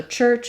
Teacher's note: I'm moving my tongue from the T position, dropping it into the position I use for the SH sound. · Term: ch sound, CH sound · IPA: /tʃ/